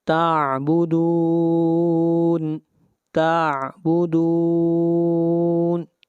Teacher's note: حروف مدہ کے بعد وقف عارضی ہو رہا ہے، یہاں پر مد عارض ہوگی، اس کی مقدار 3 الف ہے۔